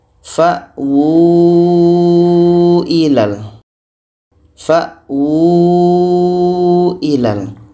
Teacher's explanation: Jadi ini bacanya wu. Wu ini panjang karena tanda mat dan waw kecil. Panjangnya 4 sehingga 5 harokat.